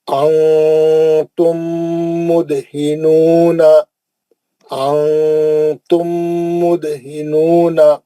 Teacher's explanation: نون ساکن کا اخفا حرف تھا, میم ساکن کا ادغام شفوی حرف میم, دال کا قلقلہ صغرا, نون میں مد اصلی.